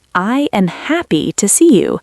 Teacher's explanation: The emphasis is on happy and see.